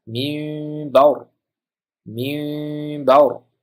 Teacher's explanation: n dan keyin b kelganligi uchun nunni mimga almashtirib dimoq bilan o'qishimiz kerak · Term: iqlab qoidasi